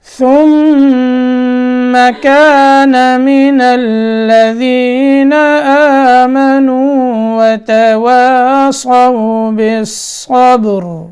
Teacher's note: میم مشدد ہے تو یہاں کیا کرنا ہے؟ غنہ ہوگا ادغام کے ساتھ